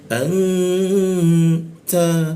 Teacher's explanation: N-nya itu berubah jadi eng, kita dengungkan, di mana di huruf ta dia, ujung lidah bertemu gigi. Jadi cara membacanya didengungkan di huruf ta, anta ya.